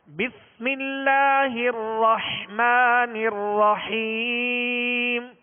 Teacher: را کو پر کرنا ہے مگر ہونٹوں کو گول کر نہیں کرنا۔ بسم اللہ الرحمن الرحیم، الرح، بسم اللہ الرحمن الرحیم، آئینہ رکھ کے آپ پڑھیے گا، جیسے سلسلہ ختم ہو تو بعد میں آپ دیکھیے گا کہ آپ کے ہونٹ گول ہوں گے، تو ہونٹوں کو گول نہیں کرنا۔